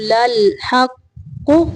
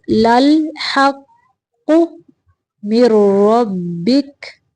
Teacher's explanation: وَمِنْ حَيْثُ خَرَجْتَ فَوَلِّ وَجْهَكَ شَطْرَ الْمَسْجِدِ الْحَرَامِ، شَطْرَ الْمَسْجِدِ الْحَرَامِ، وَإِنَّهُ لَلْحَقُّ، لال نہیں پڑھنا، لام کو کلکلا نہیں پڑھنا